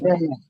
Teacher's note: Ujung lidah bertemu dengan ujung dua gigi seri atas. Kalau mengucapkan huruf tsa, ujung lidahnya sedikit keluar.